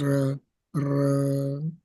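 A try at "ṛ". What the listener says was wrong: Gang, you're going too fast. And it's not ra, it's because it's a vowel. R, R,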